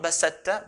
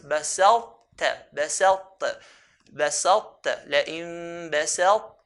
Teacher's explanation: The sifat, the characteristic that's the difference between them, or one of the characteristics, is that ta is from the heavy letters. So when we merge the ta onto the ta, we have to show that characteristic of heaviness. So here, we pronounce the ta, we have the characteristic of heaviness, then do the ta.